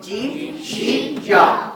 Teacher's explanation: زبان کے درمیان اور تالو کے درمیان سے جیم، شین، یا جو ہے یہ حروف ادا ہوتے ہیں